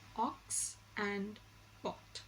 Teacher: Next is the short O sound. The short O sound is described as a back rounded vowel just above the open position, and it occurs initially and medially in the words ox and pot, but it does not occur in the final position.